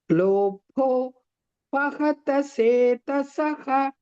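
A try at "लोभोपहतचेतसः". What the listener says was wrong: Chetasaha, not setasaha. Chetasaha. Cha, cha, chakara.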